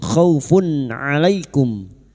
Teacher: Maka bunyi duma tanwin dibaca jelas tanpa mendengung. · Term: idhar halqi